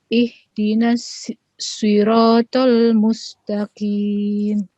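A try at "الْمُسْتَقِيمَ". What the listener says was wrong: Mustaqim. Qim, bukan qin.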